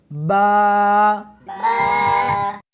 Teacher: اس حرف کو دونوں ہونٹوں کے ساتھ ملا کر پڑھیں گے۔